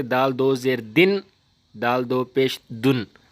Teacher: آواز ٹھہراؤ ہو، آواز کے اندر کلکلا نہ ہو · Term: تنوین